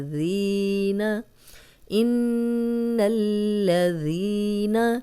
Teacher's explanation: ذال نرم پڑھیں گے، سیٹی کی آواز نہیں آئے گی، اور یہ یا مدہ بھی ہے، 2 حرکات لمبا کریں گے، ذین، ان الذین۔